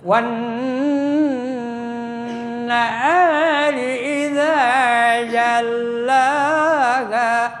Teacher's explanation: Jadi dilebur alif lamnya langsung ke nun karena nun huruf samsiah. Kemudian nunnya ada tasjid jadi dibacanya harus hah mendengung ya. · Kemudian nunnya ada tasjid, jadi dibacanya harus mendengung ya. Gunah yang mendengung.